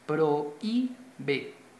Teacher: Observemos que entre esta O, que es una vocal fuerte, y esta I, que es una vocal débil, se forma un hiato, a pesar de que está esta H, pero como la H no suena, prohíbe, o sea, escuchamos la O unida a la I, entonces se forma un hiato, dos vocales unidas en pronunciación, pero que están en sílabas diferentes.